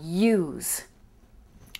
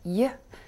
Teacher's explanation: what's the first speech sound in uh use and it's the glide ye